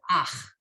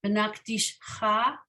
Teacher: You kind of do the vowel first and the consonant second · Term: inverted